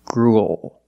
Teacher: it ends with a dark L because the L is after a vowel it's at the end of the word after a vowel that's